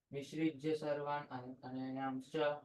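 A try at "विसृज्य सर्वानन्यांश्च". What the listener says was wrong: No, you're putting in an extra syllable. You're saying anayams. It's not anayams, it's anyans. Listen. Visrija Sarvan Anyanscha.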